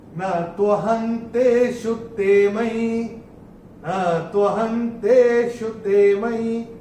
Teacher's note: चौथे चरण में ह के ऊपर अनुस्वार जो दिख रहा है उसके बाद का अक्षर है त, और अनुस्वार के बाद जब त आएगा तो अनुस्वार का उच्चारण होगा न।